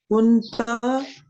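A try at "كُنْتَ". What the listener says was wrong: ता को खींचते क्यों हैं आप? कुंता कुंता कुंता मैं जहाँ पे ता है, क्योंकि उन्होंने ता जबर लगाई है, लेकिन हमने सभी का करना है ना।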